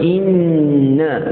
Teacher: Yang paling atas sekali adalah nun dan juga mim, antaranya yang bersabdu. Jadi inna kena tahan betul-betul dulu baru lepas. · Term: wajibul ghunnah